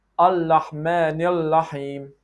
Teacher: some people pronounce Ra from the Makhraj of Lam. They say Al-Rahman Al-Rahim, which is sound funny.